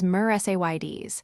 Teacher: Pay close attention to the second syllable, say, which should be stressed. Also, remember that the final S sound is soft, almost like a Z